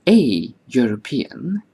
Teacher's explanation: the EU of European is pronounced as YU, as in U. Because Y is a consonant, YU is a consonantal sound, which is why we say a European and not an European.